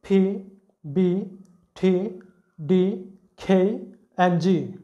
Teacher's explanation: আমাদের যে vocal tract আছে বাকযন্ত্র যেখান থেকে আমাদের সাউন্ডটা বেরিয়ে আসে সেটা কমপ্লিটলি ক্লোজড হয়ে যায় ব্লকড হয়ে যায় এই ইয়ার প্রেশারটা সম্পূর্ণরূপে এক জায়গায় ব্লকড হয়ে যায় এবং তারপরে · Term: প্লোসিভ